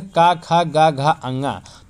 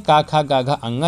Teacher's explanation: घ का जो उच्चारण स्थान होता है कंठ होता है